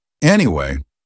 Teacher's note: And the word is anyway. Anyway. Normally with a falling intonation.